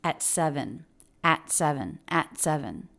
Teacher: the T here is a stop T because the next word begins with the consonant